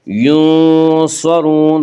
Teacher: اور یہاں نون ساکن کے بعد ان حروف میں سے یعنی حروف حلقی، حروف یرملون اور با میں سے کوئی حرف نہیں ہے، اس لیے یہاں پہ اخفاء ہوگا، اور اس اخفاء کو اخفاء حقیقی کہتے ہیں، اور حروف اخفاء کل 15 ہیں۔ ینصرون، صاد کو پر پڑھیں گے، صاد حروف مستعلیہ میں سے ہے